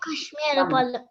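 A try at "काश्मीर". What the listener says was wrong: See, when you write Kashmir, it is not Kashmir. In English, it's Kashmir, but in Sanskritam, it is Kashmira. So you have to write Ka and half Sh and then Mira.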